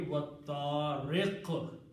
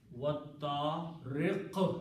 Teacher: Whatever is the harkat, in this case it is kasra, this harkat changes into a sukoon.